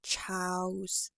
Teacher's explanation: So it would sound more like Charles, where your mouth is closing down rather than using your tongue to come up and form the L sound